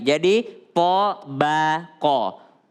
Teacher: Tabaqan, po tebal, ba tipis, qaf tebal lagi.